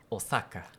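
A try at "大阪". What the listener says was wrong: Além disso, o O é longo. Então é Osaka. Osaka. Tem o som de prolongamento, que é um traço distintivo.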